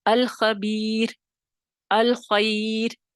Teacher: یا ساکن یعنی یا کی جو حالت ہے، یا اثر انداز ہو گئی ہے را پر، اور را باریک ہو جائے گی